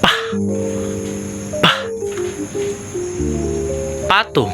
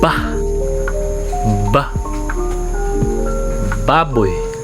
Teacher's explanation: Dito sa letrang P, kapag binibigkas ay walang panginginig sa ating lalamunan kaya ito ay walang tunog. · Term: pasara